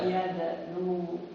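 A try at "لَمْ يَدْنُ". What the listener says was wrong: Udah, nu-nya pendek, wawunya dibuang. Iya, jadi bacanya lam yadnu. Kayak kalau di enggak panjang. Kayak di tabel kan kalau yad'u kan lam yad'u gitu aja kan. Ini juga berarti sama.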